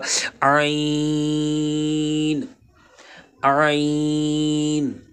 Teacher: حلق کے مڈل والا جو حصہ ہے وہاں سے عین ادا ہوگا